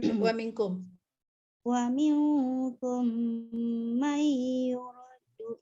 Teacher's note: Idgham mutamasilain ya, mim dengan mim tu. Lepas tu nun mati dengan ya. Idgham ma'al gunnah. Kedua-duanya kena dengung. Satu idgham dengung idgham mutamasilain, satu dengung idgham ma'al gunnah.